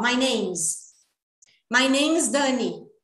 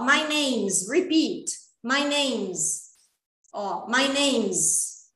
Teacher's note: esse S aqui vai ter um somzinho de Z aqui, assim, ó, my name's Dani, porque eu vou juntar, tá?